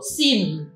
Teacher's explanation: 在▁m▁当韵尾的时候就不能借助韵哦，不像么这样有韵，我们只能将嘴巴闭起来，这样嘴巴合起来，然后发出鼻音就可以了 。你要发出鼻音了，这样的有▁sim▁只要你慢慢来念是▁sim▁有这样的音。我们讲快一点就▁sim▁嘴巴一定要合起来，你不合起来变成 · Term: 鼻音韵尾